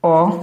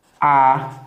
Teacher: अ ये और एक मात्रा का स्वर है ठीक है आ ये दो मात्रा का समय है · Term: दीर्घ स्वर